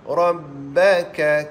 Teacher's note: Inna ra itu takrir sifat dia